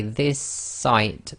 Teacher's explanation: the next word which is site so this is called germination it's effectively the merging of two sounds into one sound and you sort of hold it for a little bit longer · you're holding the s at the end of the word this and you're finishing off the sound of the s in the next word which is site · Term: gemination